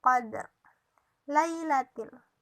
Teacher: Alif lam ini dibaca jelas karena alif lamnya ketemu dengan huruf qaf, makanya dibaca jelas dan jatuh bacaannya itu jadi alif lam qamariyah, yang qamar berarti jelas.